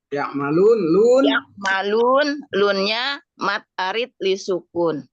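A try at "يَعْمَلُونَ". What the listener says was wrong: Nah, gitu. Cakep terus ya.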